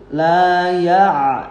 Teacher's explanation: ainnya ingat dari wasqal halqi, tengah-tengah tenggorokan. La ya', enggak masuk hidung, enggak ya'.